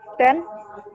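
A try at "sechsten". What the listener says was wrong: Ada S di sini, Bu. Sexten. Bacanya adalah sexten.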